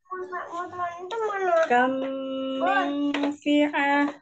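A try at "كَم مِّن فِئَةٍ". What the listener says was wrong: Ditahan lagi ya. Mil gitu ya.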